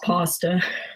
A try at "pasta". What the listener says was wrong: I say pasta. You sound like you're saying pastor, like at the church. I'm going to the